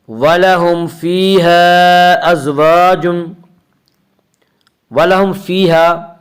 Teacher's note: وَلَهُمْ فِيهَا میں اظہار شفی ہوگا، وَلَهُمْ میں میم ساکن، اس کا قاعدہ یہ ہے کہ میم ساکن کے بعد اگر میم اور با کے علاوہ کوئی اور حرف آئے تو وہاں پہ اظہار ہوگا، اس اظہار کو اظہار شفوی کہتے ہیں۔